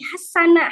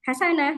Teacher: Hasanah pakai tasydid. Berarti cara membacanya harus ditekan sin-nya